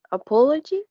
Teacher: It has 4 syllables, and the stress is in the second syllable.